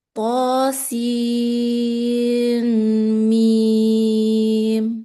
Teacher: jadi sinnya 6 kemudian ghunahnya dua baru mimnya lagi enam lagi